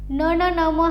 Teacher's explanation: पण परसवर्ण बघा न न न म हा जो गट आहे आपल्या स्पर्शव्यंजन गटातील तर तो अनुनासिकांचा आहे. यांचा उच्चार आपण हा नाकातून करतो, नासिकेतून करतो म्हणून त्यांना अनुनासिके असं म्हणायचे